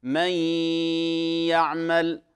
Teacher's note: ولاحظوا التزامن بين الغنة وما بين الإدغام، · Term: غنة الإدغام